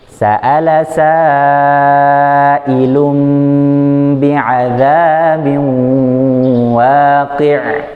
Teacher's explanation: Pas terakhir ainnya mati ya, makhrajnya di tengah tenggorokan, tahan, jangan dilepas sampai habis suara baru lepas.